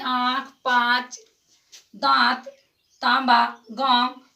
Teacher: तो मुंह से और नाक से दोनों से इसका उच्चारण होता है। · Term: अनुनासिक